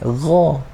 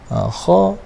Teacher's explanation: Ghin macam ni, gha. Ghin mesti ada getaran. Kalau kha, kha kata apa, dia tak ada getaran.